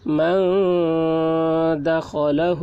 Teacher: نون ساکن کے بعد حروف اخفا میں سے دال آ رہا ہے، اس لیے نون کی آواز کو ناک میں چھپا کر پڑھیں گے، اس کو اخفا کہتے ہیں۔